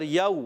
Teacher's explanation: حرف لین کو بغیر کھینچے, بغیر جھٹکا دیے معروف ادا کرتے ہیں. یہاں پر بھی واو لین میں کھینچنا نہیں ہے, نرمی سے پڑھیں گے.